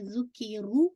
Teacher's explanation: تو آپ تھوڑا سا اپنی زبان کو آئینے کے سامنے مرر کے سامنے دیکھ سکتے ہیں. ذکیرو، رو آپ کو ہیوی کرنا ہے، رو ود دمہ کے ساتھ ہے اور 2 کاؤنٹ اسٹریچ کرنا ہے. واو متیہ ہے، بی ہا کو آپ نے پورا 2 کاؤنٹ پڑھنا ہے.